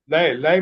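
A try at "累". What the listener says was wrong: लाई नहीं है, ले। लाई नहीं पढ़ना, लाई, ले मीन टायर्ड।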